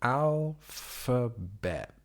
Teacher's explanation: with the emphasis on the first syllable